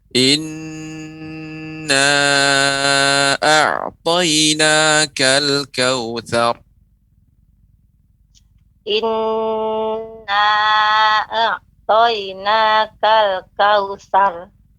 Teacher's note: nun bertasydid harus ada gunnah dan beri tempo.